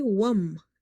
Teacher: Waw is directly connected with this meme. So we will say wam, not wa'am. Wam. Waw is connected with the meme.